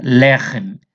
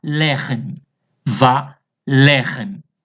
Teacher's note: E eu tenho o segol aqui, que são es breves. E o primeiro vai ser pronunciado com mais intensidade. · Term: sílaba tônica